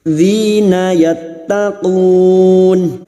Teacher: yattaqun bertemu nyaman dengan huruf hidup yang dibaca wakaf mad arid li sukun, 4 harokat kita panjangkan